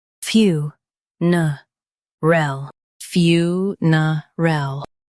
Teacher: Stress fyoo and keep ner soft. Ul is quick.